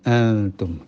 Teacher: Setelah berdebat akhirnya diskusi ya, akhirnya kok sepertinya yang lebih benar itu antum, karena antum itu betul-betul tengah-tengah antara nun dan ta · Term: ikhfa